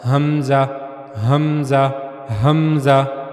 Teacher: کے سب سے نچلے حصے سے ادا ہوگی، تو اسی طرح حمزہ وہ بھی گلے کا جو سب سے نچلا حصہ ہے سینے کی طرف والا، وہیں سے حمزہ بھی ادا ہوگا